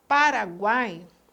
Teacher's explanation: Quando nós pronunciamos, por exemplo, Paraguai, o A tem força, enquanto o U e o I têm uma força menor. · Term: semivogal